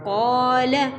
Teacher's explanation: قاف کے بعد الف ہے قاف کو تو اس وجہ سے کھینچا ہے لام کو نہیں کھینچیں گے